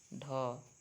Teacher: ढ मूर्धन्य सघोष और महाप्राण होता है